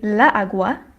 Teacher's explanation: the natural emphasis, or the natural accent in agua, is in the first syllable